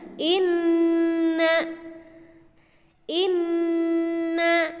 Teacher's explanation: Inna Inna cara membacanya adalah menghentakkan suara Nun yang bertasydid tersebut dan jangan lupa didengungkan ke Pangkal hidung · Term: ghunnah